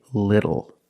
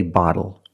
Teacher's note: When you see TLE or TTLE, phonetically the T is between vowels. And for this reason, the T changes to a fast D in American pronunciation.